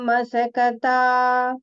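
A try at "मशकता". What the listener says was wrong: Sha, not sa. Mashakata. The sha, sa, please pay attention.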